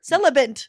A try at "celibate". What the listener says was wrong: Celibate. No, celibate. There's no N, my love.